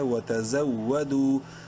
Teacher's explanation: تزو، واو زبر وا، دال واو پیش دو، واو مدہ ہے، دال کو ایک کے برابر لمبا کریں گے